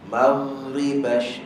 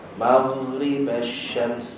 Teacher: Ghain punya bunyi dia tak akan stop sampai dia masuk pada ra. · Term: rakhawah